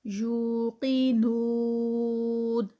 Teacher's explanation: یوقینون، اور اس میں دھیان رکھنا ہے کہ ناک میں آواز نہ جائے، جو 2 counts اور 4 counts کا اسٹریچ ہے اس میں ناک میں آواز نہیں جاتی